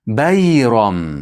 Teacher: Xuddi ba'da qalqala qilgandek mimni qalqala qilmaymiz. Bayroma deb yo'q.